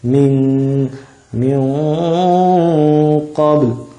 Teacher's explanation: Nah, kemudian setiap ada huruf nun ketemu qaf, maka dia dibaca gunnah. Dan karena di situ qaf mempunyai sifat tafkhim, sifat tebal, maka dengungannya juga harus tebal.